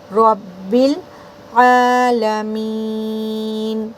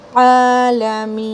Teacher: عین پر کھڑا زبر ہے، حلق سے نکالنا ہے طاقت لگا کر، عالمین، نون کے اوپر یعنی میم کو جب آپ کھینچو گے تو اس کو 4 حرکات کاؤنٹ دیجیے۔